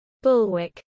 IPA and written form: ˈbʊlwək (bulwark)